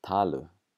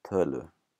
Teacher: a lot of the time in Icelandic, a doesn't like to be followed by a u, so it turns into an ö